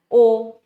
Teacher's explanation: वैसे ही होता है संवृत स्वर या वृत्ताकार। अब वृत्ताकार स्वर जिसमें हमारा मुंह पूरा गोल हो रहा है।